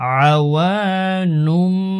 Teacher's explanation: তানভিনের পরে ইকলাবের হরফ বা রয়েছে ছোট মিম দ্বারা পরিবর্তন করব